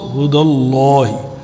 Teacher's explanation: جب اللہ کے نام سے پہلے فتحہ ہو زبر ہو تو اس کو ہم فل موت پڑھتے ہیں